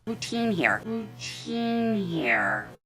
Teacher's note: The sound doesn't change, but the lips go into a smile when they say the sound E. You can see the lips are in a smile.